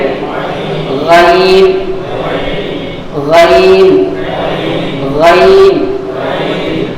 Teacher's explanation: تو آپ محسوس کریں جو زبان کی جڑ ہے، جو زبان کی جڑ والا حصہ جو ہے وہ اوپر کاکڑے پہ جا کر کے لگ جاتا ہے